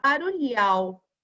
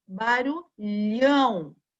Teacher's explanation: Se não tivesse o tio em cima do A, eu leria barulhal. Agora, com o tio em cima do A, o A fica com som nasal, ó. Barulhão.